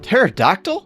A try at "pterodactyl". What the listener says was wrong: Why are you saying it with the P?